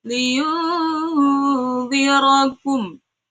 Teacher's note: Nunnya dibaca berdengung dan samar-samar. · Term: ikhfa hakiki